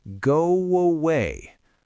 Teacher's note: I am literally putting a W in the middle of the phrase. I am not thinking about doing it.